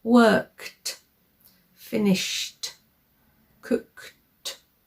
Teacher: We often have a k or a sh sound. So with these sounds, we don't use our throat so much. The sounds come from higher up and there's no vibration.